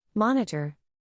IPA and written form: ˈmɒn.ɪ.tər (Monitor)